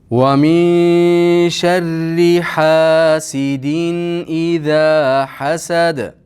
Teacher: Iza ikki harakat miqdori cho'zamiz. Hasad, hasad da to'xtaganligimiz uchun qalqala qilamiz.